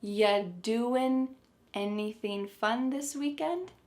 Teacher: the word you is reduced to ya